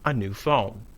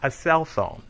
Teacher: Notice the different stress in the adjective plus noun phrase and the compound noun.